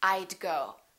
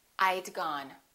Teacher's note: i would and i had sound exactly the same when they're contracted they both sound like i'd